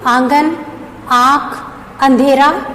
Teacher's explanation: अनुनासिक, तो इसका उच्चारण नाक और मुख दोनों से होता है।